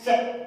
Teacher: अब बच गए हमारे पास से का उच्चारण स्थान हो जाएगा से बोलकर देखिए कहां से बोल रहा है, से, तालव्य से, यानी तालव्य, से का उच्चारण स्थान हो जाएगा तालव्य